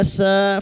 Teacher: sa fathah diikuti alif, dua harakat mad thabi'i